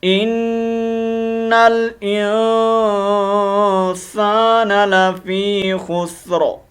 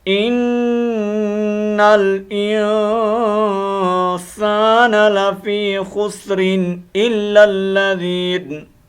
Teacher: अगर यहाँ हम वक़फ़ करेंगे तो रा को हम मोटा पढ़ेंगे, वक्फ़न साकिन हो जाएगी। अगर हम वक़फ़ नहीं करेंगे तो फिर रा के नीचे जो ज़ेरें हैं उनको वाज़ेह करने के बाद रा को बरीक करेंगे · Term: रा मोटा